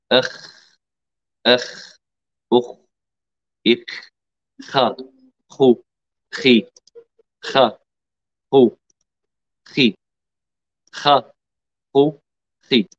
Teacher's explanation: الخاء أيضا مرتفعة أكثر من الغين، الغين أولا ثم الخاء